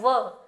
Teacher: व का उच्चारण दंत और ओष्ठ दोनों को मिलाकर किया जाता है। इसलिए इनको दंतोष्ठ कहते हैं।